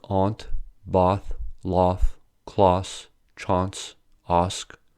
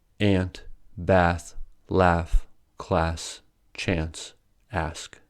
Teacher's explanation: In Britain, words like “aunt, bath, laugh, class, chance, ask” are all spoken with the /a:/ sound. In America, however, they are all pronounced with the /æ/ sound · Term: vowel shift